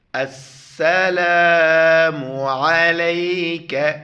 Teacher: عین کو گلے سے ادا کرنا ہے